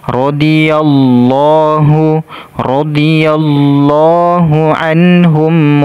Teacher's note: lafzul jalalah di sini kita tebalkan kita baca tebal